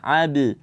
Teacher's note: Jangan juga abu ya jangan ditebalkan pantulannya dia tipis karena ba itu bersifat istifal dibaca ab ya Jangan dibaca abu tapi AB Abda itu keluarnya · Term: Qalqalah